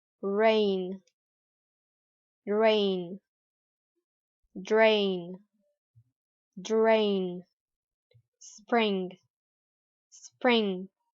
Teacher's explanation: the American people tend to pronounce the R sound with a rolling movement of the tongue